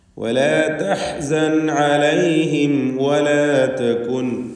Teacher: അലൈഹിം എന്നതിൽ സാക്കിനത്തായ മീമിനെ ഇൽഹാർ ഷഫവി നൽകി മണിക്കാതെ വെളിവാക്കണം.